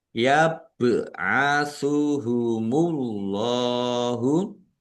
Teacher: bak sukun bacaan kolkolah dibaca memantul. Allahnya dibaca tebal karena harokat di depannya dhammah.